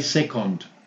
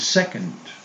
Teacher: It's not O, second, which is very typical in the Spanish accent. It's second with the schwa. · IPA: ə